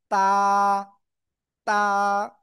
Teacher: জিহ্বার আগা, উপরে দুই দাঁতের গোড়ায় লাগান লাগান লাগান। জিহ্বার গোড়া না, জিহ্বার আগা লাগিয়ে সিম্পল একালিফ টেনে উচ্চারণ করতে হবে।